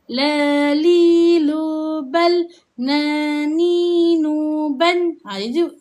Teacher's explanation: kawasan hujung lidah kita, dirapatkan ke langit keras. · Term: huruf lam dan huruf nun